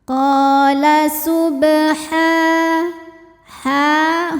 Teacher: maka cara bacanya ha dipanjangkan dua harakat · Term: Mad thi'i muqadar